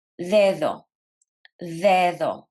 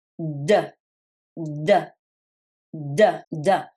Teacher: The sound is soft, the rhythm is smooth, but in English, D is alveolar, which means your tongue touches the palate. So I want you to put your tongue right behind your teeth and press against that ridge that you can feel.